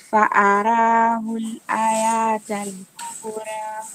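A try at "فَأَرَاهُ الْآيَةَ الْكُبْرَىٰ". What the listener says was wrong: Usivute ya hiyo.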